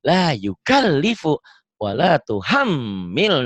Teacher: mimnya disentak tapi ditahan karena gunnah